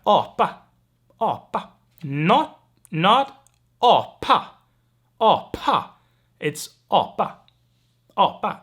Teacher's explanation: So no aspiration there.